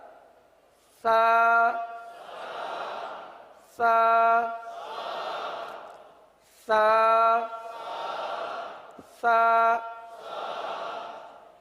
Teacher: یہ زبان کا سرا اور اوپر کے دانتوں کے اندرونی کنارے سے یہ حرف ادا ہوتا ہے